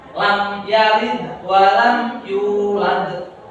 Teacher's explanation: Bukan mendengung karena ini jelas. Mim yang disukun bertemu dengan hurufnya idhar safawi, bacanya jelas, bukan lam yalid walam yulad.